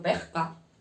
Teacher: en vez de la S utilizan la J